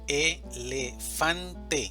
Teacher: La mayor fuerza de voz está en fan, elefante.